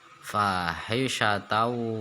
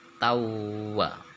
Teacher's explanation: fathah tanwin bertemu dengan wawu, idgham bigunah, masuk lebur disertai dengung